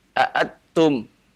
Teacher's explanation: Ini berarti dia membaca dengan condong ke izhar. Jadi kalau antum baca aatum, nunnya dimasukkan ke dalam ta, ini berarti idgham. Ya, karena itu ikhfa.